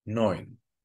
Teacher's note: This is a diphthong pronounced like oi, just like in the number 9.